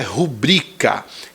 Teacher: a sílaba tônica é bri